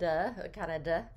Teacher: we don't pronounce the t in this word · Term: the flap